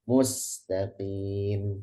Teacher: hati-hati taknya itu jangan nanti kelamaan ya. Kalau kelamaan nanti ke sana tamtid.